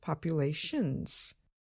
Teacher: the ending consonant sound n is voiced in other words we can feel our vocal cords move when we produce the sound